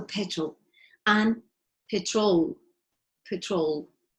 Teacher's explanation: the schwa is very relaxed. It happens because it has to happen between the R and the L. There is a sound there, but you don't make any effort, okay?